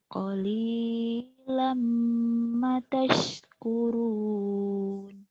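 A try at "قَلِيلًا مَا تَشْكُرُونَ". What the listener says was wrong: Ma-nya panjang. Qalilam ma tashkurun.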